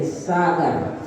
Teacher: और जब हम सरोता वाला सा बोलते हैं, जैसे सागर बोलेंगे तो हमारी जीभ दांत से लगेगी, इसे दंती सा कहते हैं